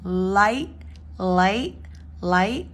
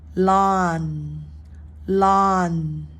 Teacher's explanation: got the L which we're going to start with is a it's a light L because it starts at the beginning